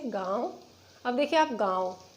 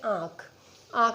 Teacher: अनुनासिक में मुख से अधिक बाहर आती है और नाक से कम बाहर आती है। जैसे गांव, अब देखिए आप गांव, नाक से कम आ रही है और मुख से इसकी वायु ज़्यादा बाहर आ रही है।